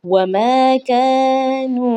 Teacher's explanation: یہ مد لازم ہے، ہم نے 4 الف کی مقدار اس کو کھینچنا ہے